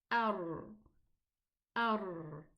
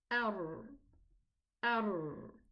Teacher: the tongue closes behind against the upper two teeth from the back, and it leaves a small opening where all this sound passes through. It's a small opening where the sound passes through. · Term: the letter ra